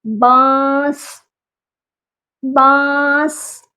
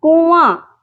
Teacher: اس میں نون کی آواز اخفا ہے، چھپی ہوئی ہے